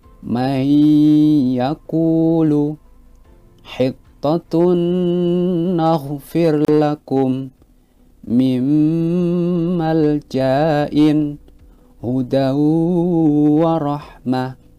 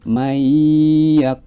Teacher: Ketika ada nun sukun ataupun tanwin bertemu dengan salah satu huruf idhom bihunah, yaitu ya, nun, mim, dan waw, maka cara membacanya itu harus dibaca memasukkan kemudian didengungkan